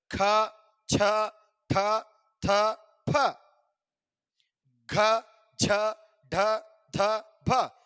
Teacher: ज्यादा सांस लेके पुकारे जाने वाले वर्ड को क्या बोलते हैं? महाप्राण कहा जाता है।